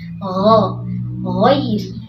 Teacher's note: huruf ghain ini bukan huruf G dalam bahasa Indonesia ya, bukan goi, tapi dia di ujung tenggorokan, kemudian alirkan dia ghairi ya.